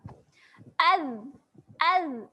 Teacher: Tak keluar angin. Dia tak keluar angin sewaktu sebut. Sebab tu bunyi dia berbeza dengan bunyi sa. Az. Kalau ambil tangan letak depan mulut tak keluar angin, tak rasa pun.